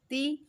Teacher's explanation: जब हमने ती अदा किया तो हमारी जो ज़बान है वो बिल्कुल नीचे ही रह गई। तो ये किसकी आवाज़ निकली, ई, एंड पे ई की आवाज़, ये ई की आवाज़ का साउंड कर रही है। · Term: ज़ेर